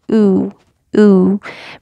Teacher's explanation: Dhamma, it requires that you make your mouth into a circle. You round your lips into a circle, like literally, and they kind of protrude, which is weird if you're like not an Arab speaker, but just do it.